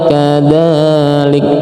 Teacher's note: Ini mad thai juga panjang dua harakat. Jadi panjang qadzalik.